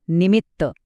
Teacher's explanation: नी वर जोर देत नाही तो पटकन बोलून जातो